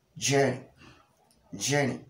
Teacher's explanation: The tip of the tongue is in contact with the alveolar ridge, and at the same time, the top of the tongue is also in contact with the hard palate in the course of pronouncing j sound. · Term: heavy j sound